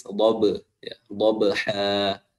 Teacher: Adapun di qalqalah seperti huruf ba, dia enggak tebal namun tipis.